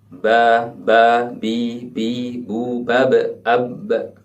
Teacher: ketika bunyi ba ini diucapkan, tidak ada udara yang keluar dari mulut kita